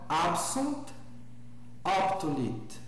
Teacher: Percebam inclusive que eu pronuncio bem o T final, né?